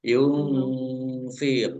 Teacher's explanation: nun sukun bertemu dengan huruf Fa bacaan Ikhfa di baca samar-samar